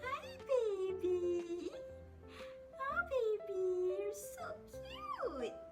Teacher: Perasan kan nada yang saya gunakan sedikit tinggi. Bila kita vowel tu juga di-stretchkan sedikit panjang macam hi.